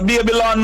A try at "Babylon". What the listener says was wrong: Well, the baby land, not lawn, land. Baby land. Baby land.